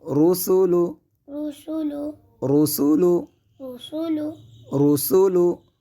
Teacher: یہاں پہ صاد کی آواز کو پیدا نہیں کیا جائے گا بلکہ سین کو پڑھا جائے گا